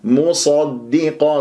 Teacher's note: صاد مفخمة مرتبة ثانية لأنها مفتوح، ولا تفخم الميم قبلها ولا الدال بعدها ، وخاصة الدال المشدد قد انحصرت ما بين الصاد والقاف، والصاد